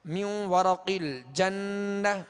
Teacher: یہاں ایک الف کی مقدار میں غنہ کر کے ادغام کریں گے